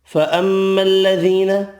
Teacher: فَأَمَّا الَّذِينَ، میم مشدد پر غنہ کریں گے، یا مدہ ایک الف کی مقدار میں کھینچ کر پڑھیں گے